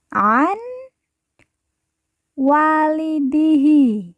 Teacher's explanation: Nun mati dileburkan, langsung masuk huruf waw, kemudian ditekan, ditahan 2 harokat dan didengungkan.